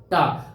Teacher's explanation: अब ये टा जब बोलोगे तो एकदम मूर्धा में जाके टा बोलो, टा, तो उस पे जाके मूर्धा में लड़ रही ऊपर, इसका नाम कह दिया गया टा।